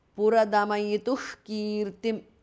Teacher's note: Visarga changes to Jihva Muliya. Kirtim. Puradamayituh Kirtim because of Sandhi.